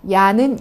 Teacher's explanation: 야는 이로 시작해서 아로 끝나죠. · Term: 이중모음